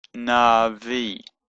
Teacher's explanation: So it's na, v, and that's a v, but because it's followed by a yod, it becomes an e sound, na v, and the aleph is silent, but it kind of lengthens the e sound, so it just makes it a bit longer. So it's Navi.